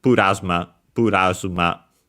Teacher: the L in English that becomes Japanese R because yeah uh L doesn't exist uh in Japanese. So it becomes the closest one which is Japanese R.